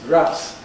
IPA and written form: græs (grass)